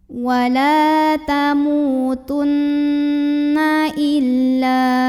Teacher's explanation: La mad tabi'i karena ada alif yang didahului baris fathah, maka bacanya panjang 2 harokat.